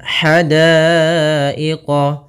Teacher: ha kecil halus dari tengah tenggorokan kita. Daiqah, di sini ada hukum tajwid berupa mad wajib muttasil, yaitu apabila terjadi adanya hamzah datang setelah huruf mad, maka kita namakan dengan mad wajib muttasil.